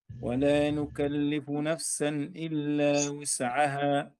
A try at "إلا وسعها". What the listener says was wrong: لا لا لا لا إلا وسعها بضم الواو